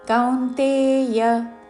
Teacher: కా ఔత్వముతో దాని మీద ఆఘాత, చివరిలో యా హ్రస్వము